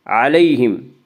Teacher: یا لین کو نرم آواز کے ساتھ جلدی پڑھیں گے۔